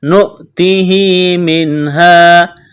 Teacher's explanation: نون ساکن کے بعد ہا ہے، یہاں پر اظہار کریں گے، غنہ نہیں کریں گے، آواز ناک میں نہیں چھپائیں گے